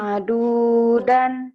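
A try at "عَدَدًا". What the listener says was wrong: Nggak ada yang panjang. Adudan. Adudan.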